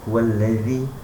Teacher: zi mesti hujung lidah